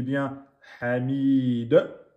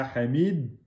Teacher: Je m'arrête bien sûr sur une soukoun, donc del soukoun. La lettre del soukoun est une lettre de qalqala, donc je dis bien hamid.